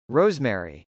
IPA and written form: rˈoʊzm.ɛri (rosemary)